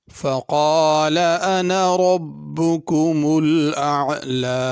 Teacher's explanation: فقال میں بڑا قاف ہے، اس کو بڑا قاف ہی پڑھنا ہے، کالا چھوٹا کاف نہیں پڑھنا۔